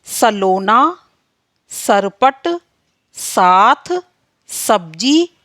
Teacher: फिर आता है सा। तो दांत और जीभ के बीच घर्षण के कारण वर्ण सा उत्पन्न होता है।